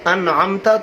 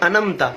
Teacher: انعمت میں عین، اگر عین نہیں نکالا انمت پڑھا. انمت کا مطلب ہے کہ تو نے سلا دیا.